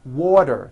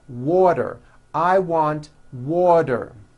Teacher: Water is pronounced as water. The T turns into a D and the whole word is voiced. Water. I want water.